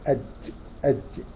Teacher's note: الجيم وسط اللسان مع وسط الحنك الاعلى